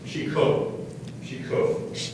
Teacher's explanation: The emphasis on the second syllable.